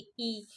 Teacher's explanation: इ का उच्चारण तालु से होता है। तो इ तालव्य वर्ण है।